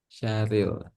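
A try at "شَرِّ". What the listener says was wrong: Nah, bunyi huruf ro harus terdengar tipis atau ringan, seperti mengucapkan ri, syarri, syarril, syarril. Jadi bukan syauril, tapi syarril, ril, tipis. Syarril, ril, ril, tipis, masih tipis, itu terlalu tebal masih. Nah, ril biasa ya, kayak manggil eh Aril, Aril, Aril, sini ril, ril, ril. rohnya bertasydid. Kalau ada tasydid, rohnya jadi double. Syar, pertama syar, kedua ril.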